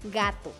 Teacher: Es oclusiva, velar, sonora